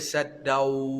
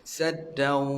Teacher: Dia kena dengungkan dia tu, dengungkan huruf waw tu kena keluarkan juga angin di hidung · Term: sengaukan